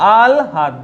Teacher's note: হয়ের সঙ্গে ল যুক্ত থাকলে লয়ের উচ্চারণ আগে হয় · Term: লফলা